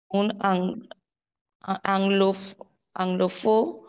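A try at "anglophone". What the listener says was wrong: ও হবে না, লাস্টের এন আছে না, এন এর পর একটা ও আছে, তাই না? তো ওটা সামনে এন পর্যন্ত আপনাকে উচ্চারণ করতে হবে।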